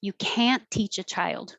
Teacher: We don't say the T in can't, so you won't hear it, but you will hear the vowel, ah.